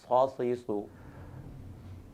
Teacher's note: زبان کا تھوڑا سا حصہ سامنے کے نیچے والے دانتوں کے کنارے سے ٹکرائے تو صاد ادا ہوتا ہے۔